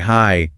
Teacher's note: you can stretch it out, like hi, to show you're really happy to see someone